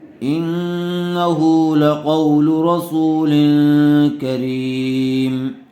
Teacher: لام کے اوپر پیش ہے، اس لیے لام کو جلدی پڑھیں، کھینچیں نہیں